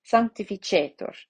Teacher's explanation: So that means that it gets the accent. Sanctificetur on the penultimate syllable.